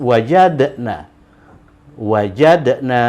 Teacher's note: Jadi dia itu disukunkan. Jadi dia dibaca dengan bunyi pantul ya, qalqalah.